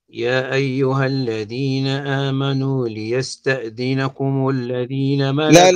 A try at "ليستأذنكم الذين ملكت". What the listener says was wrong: لا النون ساكنة